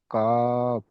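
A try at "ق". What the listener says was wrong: কাব নয়, সদ কফ, 2 নক্তাওয়ালা কফ।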